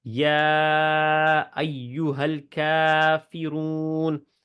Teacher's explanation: یا کے اوپر مد ہے، ٹھیک ہے، تو یہ والی جو ہے 4 حرکت لمبی کرنی ہے